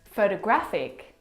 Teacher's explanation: The third example photographic the stress is on the third syllable